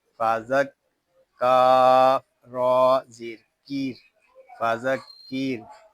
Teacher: यहाँ रा जो है इसको बारीक पढ़ेंगे क्योंकि रा साकिन से पहले ज़ेर आ रहा है।